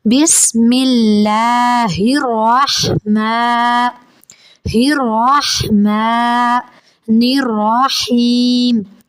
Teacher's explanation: اسے حلق کے نیچے والے حصہ سے ادا کرتے، ہا پڑھتے، اور آگے جو رحمان میں ہا ہے اسے حلق کے درمیان والے حصہ سے ادا کرتے ہیں